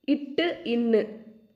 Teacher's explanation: வல்லின எழுத்துக்கள் பிறக்கும் இடம் மார்பு. நாவின் நுனி அன்னத்தின் நுனியை பொருத்துவதால் பிறக்கும் எழுத்துக்கள்